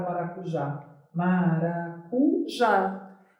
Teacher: a sílaba tônica se encontra na última posição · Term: oxítonas